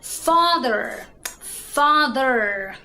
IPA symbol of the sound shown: ɘr